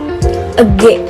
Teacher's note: Nah, teman-teman, cara melafalkan konsoid G ini menggunakan organ belakang lidah dengan langit-langit lunak. Kedua, konsoid G merupakan konsoid plosif atau konsoid hambat, yaitu konsoid yang dihasilkan dengan cara menghambat udara yang keluar dari paru-paru secara penuh